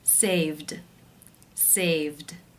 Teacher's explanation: The final sound is the v voiced consonant sound, so the ed will take the d voiced d sound ending.